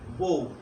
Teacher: তারপর বউ একটা শব্দ, এই যে বউ শব্দটা আমরা কেউই কিন্তু যখন বলার সময় আমরা কেউই কিন্তু বউ বলি না, এটা মূলত হওয়া উচিত ছিল এভাবে, এই যে ব যোগ অ যোগ উ, হওয়া উচিত ছিল বউ, কিন্তু এখানে শব্দের শুরুতে যেহেতু অ আছে, এজন্য ওই অটা ও হয়ে গেছে ওকার